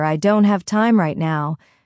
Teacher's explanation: Stress on don't and now.